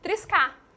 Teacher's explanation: apagamos esse R do final e colocamos um acento na nossa fala para ficar forte